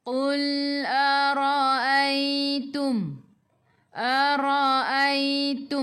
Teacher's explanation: Pangkal lidah menyentuh langit lembut dekat dengan nak tekak makhraj huruf qaf.